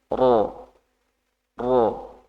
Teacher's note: Ro biasa kan ro seperti bahasa Indonesia itu kan ro biasa. Kalau ro di situ lebih ditebalkan, diangkat pangkal lidahnya. Ro. Pangkal lidah itu bagian lidah paling belakang.